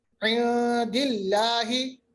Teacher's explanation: लामी जलाला बारीक क्योंकि माकबल जेर है